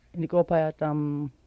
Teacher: Notice how the vowel O with the stress mark over it sounds louder than the rest of the word.